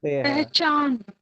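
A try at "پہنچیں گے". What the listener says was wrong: नहीं, नून नहीं है, पहचान नहीं होगा ये। और उसके पहचान के लिए चे के बाद अलिफ आएगा। पहुंचे ही लिखा हुआ है,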